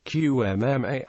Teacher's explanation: Before other labial consonants, it will be pronounced closer to a syllabic bilabial nasal